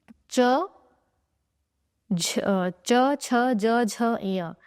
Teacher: इन वर्णों का जो उच्चारण स्थान है वो होता है तालु, इसीलिए इन्हें तालव्य वर्ण भी कहा जाता है।